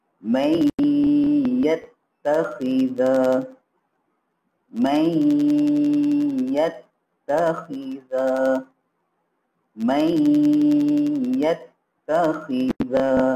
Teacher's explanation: Jadi bacaan juga secara idgham ma'al gunnah, apa Ustaz cakap tadi, kita kena baca masukkan dia. Masukkan huruf nun ke dalam huruf ya dengan dengung.